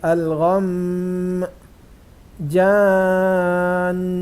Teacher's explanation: جب ہم آخری حرف شد والا نون یا میم ہو تو اس وقت وقف کرتے ہوئے گننا بھی کیا جائے گا